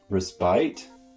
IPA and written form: rɪˈspaɪt (Respite)